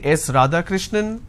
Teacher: now it goes on a rising tone now it doesn't come as an answer it comes as a guess or it comes as a question